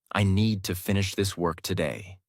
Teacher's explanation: Need, finish, work are strong. Other words are softer.